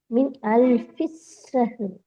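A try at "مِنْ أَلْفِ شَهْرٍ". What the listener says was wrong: அது சீனே நீங்க உச்சரிக்கிறது ஷீன் இல்லையே. ஷீன்ற சவுண்ட் வரவே இல்லையே. உங்களோட வாய் தான் சவுண்ட் வருது இல்லையே. ஷீன் சீன் தான் வருது.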